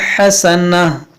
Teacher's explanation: وقف کریں گے تو اس گولتا کو ہا ساکنہ بنائیں گے